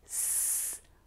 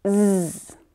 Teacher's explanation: They have the same tongue and mouth position, but one uses air to make the sound. It's unvoiced. And the other uses your vocal cords.